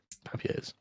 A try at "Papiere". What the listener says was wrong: Papieren. You went a bit French there.